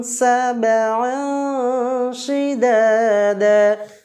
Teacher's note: তানবিনের পরে শিন বর্ণটি আছে এর জন্য এটাকে আমরা গুন্না করে পড়ব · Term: গুন্না ইকফা